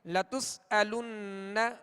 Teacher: اور لتسألن حمزہ ہے، لتسألن تو اس کو علن عین کی آواز میں نہیں پڑھیں گے بلکہ حمزہ کو سختی کے ساتھ ادا کریں گے. لتسألن نون مشدد ہے، اس پر تشدید ہے، اس میں غنہ کریں گے